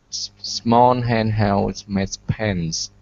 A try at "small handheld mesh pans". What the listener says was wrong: Okay, so here you're adding an S in front of mesh. You're saying smesh. Okay, so this is handheld mesh pans. Okay, now give me an SH sound. It's mesh.